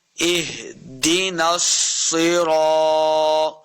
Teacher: ہا کو لفظ کے ساتھ پڑھیں گے، حلق کے نچلے والے حصے سے ہا ادا ہوگا